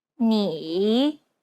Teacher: it's the most unique tone out of all the tones because the pitch dips and then Rises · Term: third tone